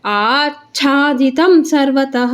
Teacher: ಯಾಕೆಂದರೆ ಚ ನಮಗೆ ಮಹಾಪ್ರಾಣ ಇದೆ, ಅದಕ್ಕೆ ಅರ್ಧ ಚ ಹೇಳ್ಬಿಟ್ಟು ಆಮೇಲೆ ಚ ದೀರ್ಘಾಕ್ಷರ ಮಹಾಪ್ರಾಣದ ಚಾನ ಒತ್ತಿ ಹೇಳ್ಬೇಕು. ಆಚ್ಛಾದಿತಂ ಸರ್ವತಃ ವಿಸರ್ಗ ಇದೆ ತಾ ಮುಂದೆ, ಅದಕ್ಕೆ ಹ ಸರ್ವತಃ.